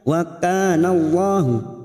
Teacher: lam jalalah yang didahuli fathah kita baca tafkim atau tebal